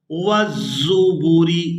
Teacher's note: زا کو سختی کے ساتھ ادا کریں گے اور اس کو ادا کرتے ہوئے سیٹی کی مثل آواز پیدا ہوگی.